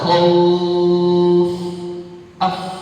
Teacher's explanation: Belakangnya huruf fa punya sifat hams